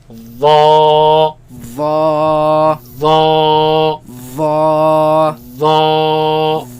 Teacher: the front flat part of the tongue against the edge of the upper teeth, right? And it is heavy. That means the back of the tongue is raised, and it is soft. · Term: heavy letter